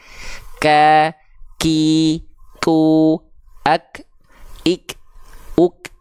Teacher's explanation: huruf kaf ini hanya berupa percikan nafas saja